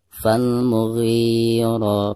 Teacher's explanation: mughi dipanjangkan 2 harokat ya, karena ada harakat kasroh ghi ya, lalu berhadapan dengan ya sukun, dihukumi mad tabi'i, dibacanya 2 harokat.